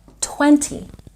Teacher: As you remember from part 1 about numbers, numbers in the tens have a stress on the first syllable